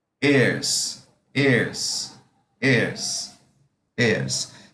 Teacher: E a pronúncia dele, esse H não é pronunciado. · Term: H sem som